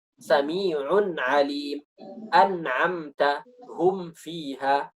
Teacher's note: Ada gunnahnya, tapi gunnahnya kurang gitu. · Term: naqisah